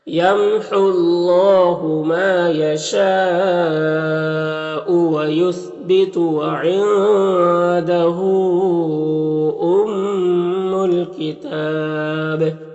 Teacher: لِكُلِّ أَجَلٍ کتاب، یمحو اللہ، میم میں اظہار شفوی ہوگا، یہاں پر اللہ کے لام سے پہلے ہا کے اوپر پیش ہے تو اللہ کے لام کو پر پڑھیں گے، اس واو میں اور یہ دونوں الف میں اور اللہ کا پہلا لام میں کوئی حرکت نہیں ہے، سب کو نہیں پڑھنا۔ · یہاں پر وقف کریں گے تو با میں قلقلہ ہوگا اور مد عارض وقفی ہوگا